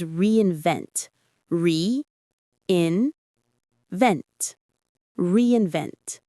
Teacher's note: The primary stress is on that final syllable.